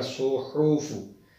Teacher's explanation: हा को दरमियान वाले हल्क से अदा किया जाएगा